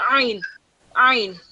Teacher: Ayn sound is more of from the throat, not bottom of the throat. It's like from the middle of the throat. So when you say when you're saying Ayn, you can hear that a bit of that jerk sound, the Ayn.